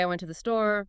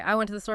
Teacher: a rising tone suggests there's more to come